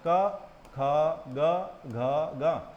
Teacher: ख ग घ ग इनको कंठ व्यंजन बोला जाता है क्योंकि इनको बोलने के लिए जो है कंठ का इस्तेमाल होता है तो जीभ कहीं और टच नहीं होती है और कंठ से